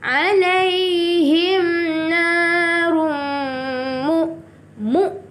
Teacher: Alaihim narum, tanwin bertemu mim, idgham bi gunnah, memasukkan dengan dengung.